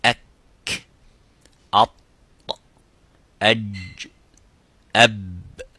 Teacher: The sound stops. That stopping of sound is called shidda in Arabic language and in tajweed.